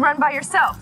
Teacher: run which is a verb and a one syllable content word so it will be stressed